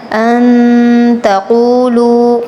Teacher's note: قاف پر تفخیم کرنی ہے۔ تقولوا علی اللہ، لفظ اللہ پر تفخیم کرنی ہے۔